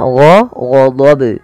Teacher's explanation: di sini ada bacaan qalqalah dan ini qalqalah kubra yang dimana qalqalah kubra terjadi di akhir bacaan kita.